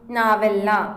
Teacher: ಎಂದಾಗ ಎ ಇಲ್ಲಿ ನಾವೆಲ್ಲ ಎಂಬ ಪದ ಬಂದಾಗ ಅಂದ್ರೆ ಸಂಧಿ ಪದ ಬಂದಾಗ ನಾವು ಎಂಬಲ್ಲಿ ದೊರೆದ ಪೂರ್ವ ಪದದ ಕೊನೆಯ ಸ್ವರಾಕ್ಷರವಾದಂತಹ ಉಕಾರ ಲೋಪವಾಗಿದೆ